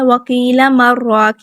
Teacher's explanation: سکتہ کی وجہ سے یہاں پہ ادغام نہیں ہوتا، ٹھیک ہے، کیونکہ یہ نون اور را کو آپس میں ملنے سے روک دیتا ہے۔